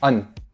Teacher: as an ending consonant, it is an alveolar nasal stop, and it's a little shorter than an English alveolar nasal stop